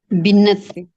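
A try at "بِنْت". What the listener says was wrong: बिंत। बिनत नहीं है, ये बिंत है, नून साकिन। बिंत है।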